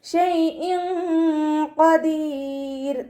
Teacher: തെൻവീനിന് ശേഷം ഇഖ്ഫാൻ്റെ ലെറ്ററായിട്ടുള്ള ഖാഫ് വന്നിട്ടുണ്ട്. തെൻവീനിലുള്ള നൂനിൻ്റെ സൗണ്ടിനെ മറച്ച് വെച്ചിട്ട് മണിച്ചോതി കൊടുക്കുക. നൂനിൻ്റെ സൗണ്ടിനെ വ്യക്തമായിട്ട് കേൾപ്പിക്കാതെ നോക്കുക കേട്ടോ.